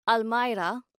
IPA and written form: aːlˈmaɪra (almirah)